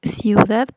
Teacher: En ciudad, por ejemplo, tenemos ciu juntas una I y una U, en donde ambas son débiles. Pero la vocal tónica de ciudad no es en ciu, sino en dad. Entonces es una palabra aguda.